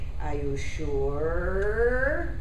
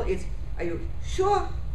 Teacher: I'm doing it slowly my pitch is moving up gradually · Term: rise